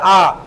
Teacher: जिस स्वर के उच्चारण में मुख सबसे अधिक खुलता है उसे हम क्या बोलेंगे, विवृत स्वर। और अगर पूछ ले कौन सा होता है, तो ये आ होता है।